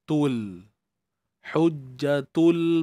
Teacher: huruf ta yang berbaris depan kena muncungkan bibir